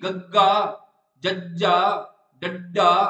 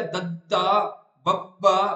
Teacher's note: ਤੁਹਾਨੂੰ ਛੋਟੀ ਜਿਹੀ ਆਪਣੇ ਆਪ ਗਲੇ ਚ ਆਵਾਜ਼ ਕੰਬਣੀ ਮਹਿਸੂਸ ਹੋਊਗੀ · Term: ਸੰਘੋਸ਼ ਨਾਦੀ